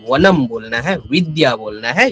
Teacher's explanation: ऊपर के दांत नीचे के होठ को हल्का सा छूते हैं। अगर हम व सही से उच्चारण करेंगे तब हमारा नीचे का नीचे वाला जो होठ है नीचे वाला जो लीफ है उसको हमें ऊपर का दांत से सही से टच करवाना है।